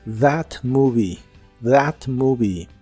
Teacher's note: La th de that es como una d vibrante